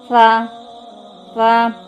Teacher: জিব্বার আগা হচ্ছে উপরের 2 দাঁতের আগার সাথে লাগিয়ে, সা জিব্বার আগা উপরের 2 দাঁতের আগার সাথে লাগিয়ে নরমভাবে আদায় করতে হবে।